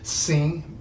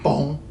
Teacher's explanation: an N or an M after a vowel can also nasalize it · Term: nasalization